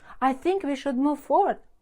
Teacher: This is how you sound. Mistake number 1, rising tone. You turn statements into questions.